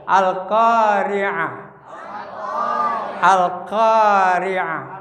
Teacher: Idhar qamariyah. Al-qa panjangnya 2 maddo ya.